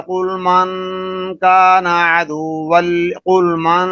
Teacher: نون اخفا کے ادا کرتے ہوئے اس کی آواز ناک کے بانسے سے ادا کی جا رہی ہے